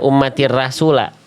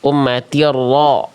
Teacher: Ro tebal, jangan dibaca ummatir rasula. Ummatir ro. Angkat pangkal lidah.